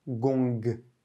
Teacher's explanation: avec le mot gong, par exemple, on a bien un son G final, avec expulsion de l'air.